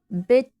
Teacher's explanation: बिट, टी जो है, जब हम बिट में टी को साउंड प्रोड्यूस कर रहे हैं तो टंग जो है ऊपर के दांतों को टच हो रही है